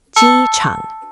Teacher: High flat, then dip.